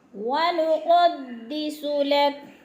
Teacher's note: क़ाफ मोटा, सीन को सीटी की आवाज़ से, लक लाम काफ बारीक।